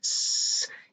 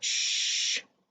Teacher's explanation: tanto el inglés como el japonés tienen el sonido alveolar, fricativa alveolar sorda, s, y la fricativa palatal sorda, sh.